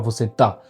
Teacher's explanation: Donc si vous avez un accent aigu comme ça sur le A, dans le mot esta par exemple, on va tellement insister sur le ta par rapport au S que ça va faire você ta. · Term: accent tonique